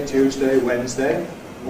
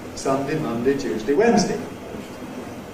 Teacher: that is a difference in whether or not you weaken the ‘-day’ part of it